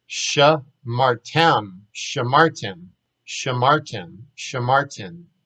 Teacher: because the accent's on the end, they start with the shva